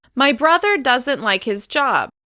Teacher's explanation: I'm stressing the contraction along with other keywords in the sentence